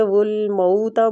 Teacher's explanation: مو میں وولین ہو رہا ہے تو وولین کی مقدار بھی کھینچنے کی تھوڑی سی ہوتی ہے